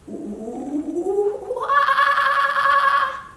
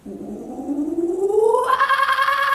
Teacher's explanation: start low on an ooh and go higher to an A.